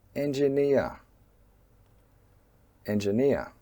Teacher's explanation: the first syllable 'en' is a minor stress, and the third syllable 'eer' is a major stress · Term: word stress